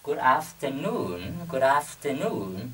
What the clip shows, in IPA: ɡʊd-æf·tərˈnun